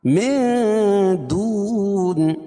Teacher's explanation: اس لیے کہ نون ساکن کے بعد حروف اخفاء کے 15 حرفوں میں سے دال ہے، تو یہاں ناک میں آواز کو چھپا کر پڑھیں گے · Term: اخفاء حقیقی